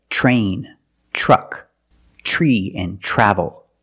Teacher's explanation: When you have TR together in any situation, you can pronounce it ter, but usually we don't. We pronounce it ch plus the R sound, chur. Example, train, truck, tree, and travel.